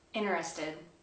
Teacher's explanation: Sometimes the T sound is omitted altogether.